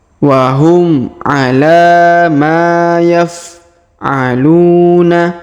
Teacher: huruf Ma kita panjangkan dua harakat karena di depannya terdapat Alif